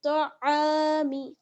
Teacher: اچھا تو کو موٹا پڑھنا ہے لیکن عین کو باریک پڑھنا ہے